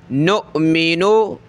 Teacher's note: حمزہ ساکنہ ہے, جھٹکا دیں گے